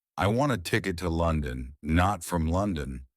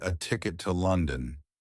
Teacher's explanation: It's not to, it's to, right? You could say to if it was, I want a ticket to London, not from London, because you're stressing to.